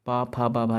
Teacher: जो पा वर्ग पूरा का पूरा ओष्ठ ध्वनि है